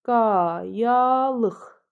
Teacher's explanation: Yazılışı ilə tələffüzü arasında bir fərqli məqam var. Deməli, qayalıq sözündə bəli, bir dənə q x-ya çevrildi.